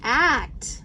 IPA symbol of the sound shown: æ